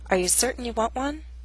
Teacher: This statement has 2 glottal stops, certain and want one. The final T is followed by a consonant sound, w, one.